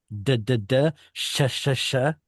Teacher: that sound sh it's pronounced in the same place where d is pronounced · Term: sheen sound